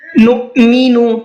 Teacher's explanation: نؤمن حمزہ ساکنہ ہے اور حمزہ ساکنہ کے پڑھنے میں جھٹکا ہوتا ہے، اس لیے ہم نے اس کو جھٹکے کے ساتھ میں پڑھا ہے۔